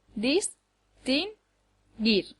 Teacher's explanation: distinguir lleva el acento en la última sílaba dis ti gir no puede llevarlo en ninguna de las otras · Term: acento prosódico